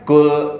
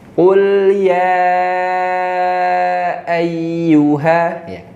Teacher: Kadang kurang menebalkan qafnya. Jadi kayak huruf kaf yang ringan gitu. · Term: Qaf tebal